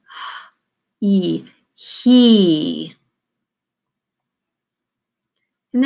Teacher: this is your H it's made in the back of your throat